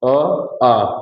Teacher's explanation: यहाँ की ध्वनियां कहाँ से निकल रही है, बिल्कुल आपके कंठ से निकल रही है, बिना बीच में किसी अवरोध के।